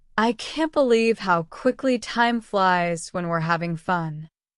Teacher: Now, when you repeat this, make sure to put emphasis on quickly to reflect the surprise. Use a slightly rising tone on time flies to show excitement. Don't forget to drop the G sound in having common in spoken English.